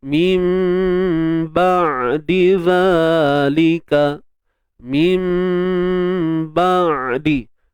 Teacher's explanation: Huruf ain ni ingat bila kita matikan dia jangan tahan suara. · Huruf ain yang bersifat tawassut, iaitu suara yang tidak tertahan dan suara yang tidak mengalir.